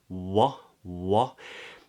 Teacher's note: the lips release but they keep rounded into the the o sound